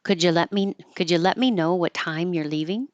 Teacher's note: It's a yes no question, so it goes up. · So putting stress on lemme, time, and leaving.